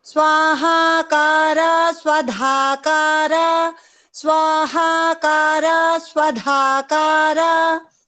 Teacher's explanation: स्वधाकारा धा is mahaprana.